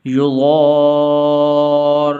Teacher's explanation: دیکھنا ہے، سننا ہے، خوب مشق کرنی ہے آپ نے، یضار، را کے اوپر شد ہے اور جس حرف کے اوپر شد ہو تو وہاں پر دو حرف پڑھے جاتے ہیں ، تو ایسے نہیں پڑھنا، ولا یضار، یضار، یضار پڑھیں گے